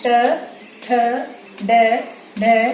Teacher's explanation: मतलब जो कठोर तालु होता है, हमारा तालु है उसके अगले वाला भाग जो होता है वो होता है मूर्धा। तो जो हमारी जिह्वा है वो मूर्धा को स्पर्श करती है, तो इन्हें कहते हैं मूर्धन्य